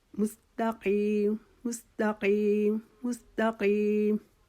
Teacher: ये जो दो नुक्तों वाला काफ है, इसको हमने ज़बान के उसी आखिरी हिस्से से अदा करना है, लेकिन इसके लिए हमने थोड़ी सी अपनी आवाज़ हलक से निकालनी है